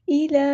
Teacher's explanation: لام پہ کھڑا زبر ہے تو ایک الف کے برابر ہم لمبا کریں گے